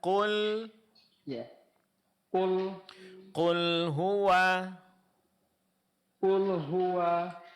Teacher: Kemudian huruf lamnya tipis ya, Pak ya.